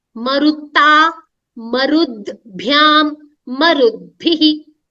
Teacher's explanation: the takara is changing to dakara